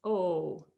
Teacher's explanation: a long o in japanese is not changing its sound it's just instead of oh it's o for a longer time